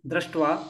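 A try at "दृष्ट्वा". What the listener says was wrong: Here, no, don't do dra, do dr, drishtva. Because there is no akara, there is a r. R is like in between. It is its own swara. That's why it is separated out as a swara. It is not repa. It is not ra. It is r, r. So drishtva, like that we have to read.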